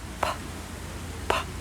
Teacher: P is the same shape and action with our mouth, but we don't use our voice box, so you shouldn't feel anything here. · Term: unvoiced P